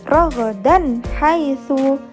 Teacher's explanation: ada fathah tanwin bertemu dengan huruf ha, maka dibaca jelas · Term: idhar